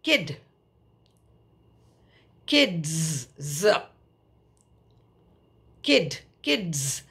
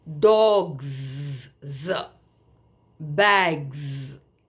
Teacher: we are adding s but we are pronouncing that s as Z